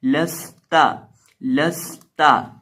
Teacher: سین ساکن ہے اور سین کے اندر ہمیشہ سٹی پیدا کرتے ہیں، ساکن ہو یا نہ ہو۔